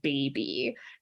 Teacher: You have two bilabial sounds in a high front vowel. It's like meant to sound cute. · So anything that has an E sound is often usually associated with things that are small or cute or baby like think about the word baby just in and of itself. You have 2 bilabial sounds and a high front vowel. It's like meant to sound cute.